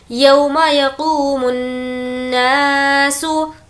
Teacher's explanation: नून पर तज़दीद है, गुन्ना होगा। यक़ूमुन्नासु लिरब्बिल, लिरब्बिल आलमीन, मी को खींचेंगे क्योंकि या मद्दा है और नून पर जज़म दे देंगे।